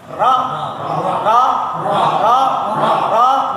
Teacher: Di dhahrul lisan, punggung lidah. Di belakang gusi.